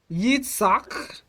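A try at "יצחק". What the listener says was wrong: And give proper cha, Yitzchak.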